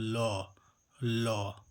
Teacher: ल का उच्चारण करते समय हमारी सांस जीभ के बगल पार्श्व से गुजरती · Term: पार्श्विक व्यंजन